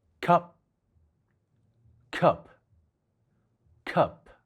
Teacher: 唔同嘅地方。呢個中文字嘅粵語發音係吸，韻尾有接近英文輔音p嘅發音。唔同嘅係呢個韻尾喺粵語發音時，從口腔呼出嘅氣流會被阻塞。換言之，發音時雙唇需要閉合，阻擋氣流從口腔呼出。因此呢個字發音係吸。留意發音完結時，雙唇需要繼續保持閉合。吸，聽感上聲音就好似被突然截斷一樣，唔會有強氣流從口腔呼出。吸呢個中文字嘅粵語發音同英文單詞cup嘅發音有啲相似，兩者比較明顯嘅分別係cup嘅尾音係p，係一個清輔音voicelessconsonant。發音時雙唇同樣需要閉合，阻擋氣流從口腔呼出。但 發音接近完結嘅時候，雙唇要突然放開，讓氣流爆破而出